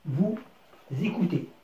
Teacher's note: وأصبح نرى حرف الأس ولكن نسمع حرف زاد